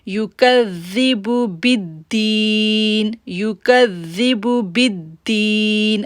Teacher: با کو دال کے ساتھ جوڑیں گے تو شدت ظاہر کریں گے اور دی کو ہم کھینچیں گے